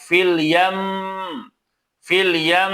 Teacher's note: Nah, itu kan mim tasdid ya. ya ee tetap dibaca gunah ataupun didengungkan tidak tergesa-gesa